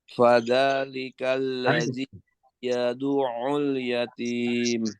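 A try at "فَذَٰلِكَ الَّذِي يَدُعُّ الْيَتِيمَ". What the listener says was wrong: tasdidnya kuatkan. Ya du'ul.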